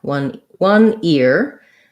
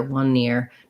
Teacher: So if I'm doing 1 ear, I just have the ear, one ear. What most Americans will do if they're saying 1 ear is they won't align those together, 1 near, because it would sound too much like 1 near.